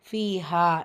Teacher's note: இரண்டு இடங்களிலும் இரண்டு இரண்டு ஹரக்கத் அளவு நீட்டம் கொடுத்து ஓதணும்